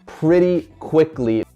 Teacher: Lo pronuncia con algo que se llama el flap T, donde pretty, esa T, no se pronuncia como t.